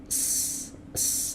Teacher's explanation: aliran suara itu yang disebut dengan rakhawah dan hams